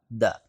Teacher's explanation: زبان کی نوک اوپر والے دانتوں کے مسوڑے جڑوں سے لگائیں گے تو ادا ہوگا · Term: دال